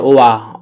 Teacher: ওয়াটা দুই ঠোঁটের মাঝখান থেকে উচ্চারণ করতে হয়।